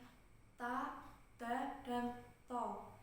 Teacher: tempat keluar makhrajnya itu sama, yaitu dari punggung ujung lidah bertemu dengan gigi seri atas